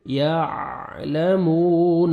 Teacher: واو مد ہے, 1 سیکنڈ میم کو کھینچنا ہے